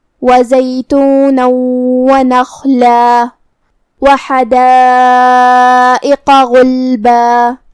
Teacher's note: حرف الحا کو ہم حلق کے درمیان والے حصے سے ادا کریں گے، یہاں مد ہے، یہ مد واجب متصل ہے، تو ہم اپنی آواز 4 مد کے برابر لمبی کریں گے۔ · کلمت نخلا میں یہاں حرف الخا کو ہم حلق کے اوپر والے حصے سے ادا کریں گے، جو کہ اس پہ جزم ہے، تو خا کو ظاہر کرنا ہے اور اسے بھاری آواز میں بھی پڑھنا ہے کیونکہ خا حروف التفخیم میں سے ہے۔